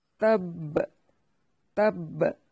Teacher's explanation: تا کو با سے ملانا ہے سختی کے ساتھ، تب تب، اور تا کو باریک پڑھنا ہے، تب، اس کو ہلانا بھی نہیں ہے، صرف حروف قلقلہ جو کہ 5 ہیں، قاف، طا، با، جیم اور دال، ان کو ہلایا جاتا ہے، ان کے سوا کسی حروف کو نہیں ہلایا جاتا۔